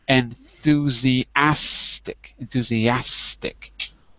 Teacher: try to say it with the stress on the fourth syllable